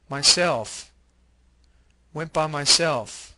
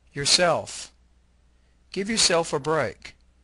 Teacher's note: stress the self part of reflexive pronouns